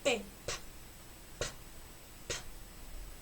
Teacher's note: este sonido es un sonido oclusivo que quiere decir que el sonido es producido por el golpe del choque vi labial aquí yo traje ni boquita para que